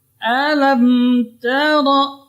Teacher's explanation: Jadi ta dibaca tarqiq. Ra-nya tebal.